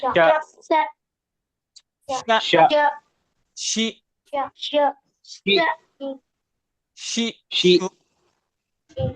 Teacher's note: middle of the tongue and hard प्लेट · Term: शीन का मखरज